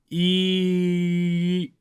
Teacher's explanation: So we say «e» for a long time while moving our tongue backwards. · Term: «ы» sound